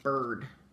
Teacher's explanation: the I you don't really hear. You're just hearing that R. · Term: R-controlled vowel